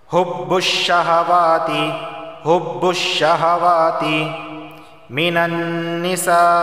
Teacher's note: یہاں پہ مد متصل ہوگا کیونکہ مدہ اور حمزہ ایک ہی لفظ کے اندر جمع ہے